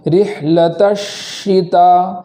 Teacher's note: شین پر تشدید ہونے کی وجہ سے ایک حرف کی زیادہ تاخیر کریں گے، اس طریقے سے رحلۃ الشتا، ایک حرف کی زیادہ تاخیر ادا کریں گے تبھی یہ تشدید مکمل ادا ہوگی، ورنہ تشدید مکمل ادا نہیں ہوگی۔